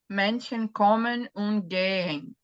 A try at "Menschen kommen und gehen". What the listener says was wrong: É, só alonga, viu, esse gehen aqui, só alonga. É, gehen, sehen, de ver também. São verbos parecidos, tem esse H no meio.